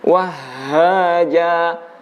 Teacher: huruf H itu bukan dari dada tapi dari pangkal tenggorokan. Hanya saja karena ada getaran yang sampai ke dada, maka sebagian orang menyimpulkan bahwa huruf H keluarnya dari dada.